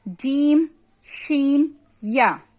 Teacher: واسط زبان یعنی زبان کے بیچ کا حصہ، زبان کے بیچ کا حصہ اوپر کی طرف، یہاں پر دیکھ رہے ہوگے اوپر کی طرف تالو پر لگنے سے حرف شجریہ ادا ہوتا ہے، جیم شین یا، یعنی جو زبان کا بیچ کا حصہ ہوتا ہے اوپر کی طرف، یہاں پر دکھ رہا ہوگا آپ کو، اوپر کی طرف لگنے سے یہ 3 حروف ادا ہوتے ہیں، جیم شین یا۔